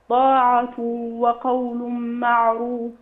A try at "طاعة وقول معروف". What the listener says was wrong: اشبعي الغنن شوية، طاعة وقول، لسه بنقول الغنة حركتين،